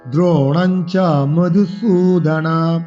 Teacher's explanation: মধুসুতে দীর্ঘস্বরে টান দিতে হবে